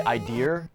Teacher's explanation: British and Australia both tend to put an R sound at the end of a word that ends in an uh sound